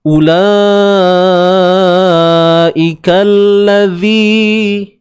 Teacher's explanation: huruf zal tu kena keluar ke hujung lidah. Sikit je tuan-puan. Di antara gigi atas dengan gigi bawah.